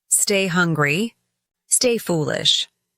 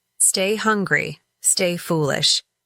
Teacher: The stressed words are hungry and foolish with stay serving as the rhythmic foundation.